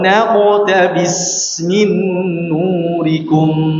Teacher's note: Qalqalahnya tebal seakan-akan seperti fathah.